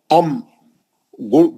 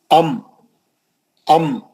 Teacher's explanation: दोनों होठ मुड़ के मुंह के अंदर आ जाते हैं